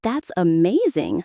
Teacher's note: When you hear an American say, "That's amazing," notice how the tone rises at the end, full of excitement.